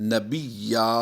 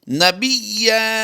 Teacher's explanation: حالت وقف میں نبیّا، یعنی تنوین کو، دو زبر کی تنوین کو ہم نے الف مدہ سے وقف کی حالت میں بدل دیا۔